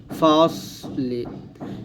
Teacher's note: সদ এমনভাবে উচ্চারণ করবেন যেন পাতলা না হয়ে যায়, মানে সিনের মতো যেন না হয়ে যায়, সদ মোটা করে বলতে হবে